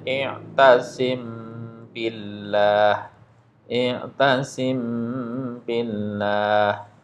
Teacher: suara mim sukun disamarkan ke huruf ba dengan mendengung panjangnya 2 harokat. Sekali lagi ketika ada mim sukun ketemu dengan huruf ba, hukum bacaannya namanya ikhfa syafawi.